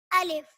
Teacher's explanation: الف منہ کے خالی حصے سے ادا ہوتا ہے